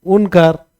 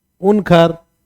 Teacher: क के महाप्राणीकरण हो जाता है